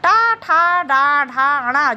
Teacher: ट वर्ग ट ठ ड ढ ण जिसका उच्चारण स्थान मूर्धा होता है